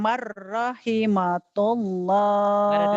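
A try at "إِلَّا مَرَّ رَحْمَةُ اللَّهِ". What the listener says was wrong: Rahimahullah. Ha. Bukan ta ini. Kan nggak ada titiknya.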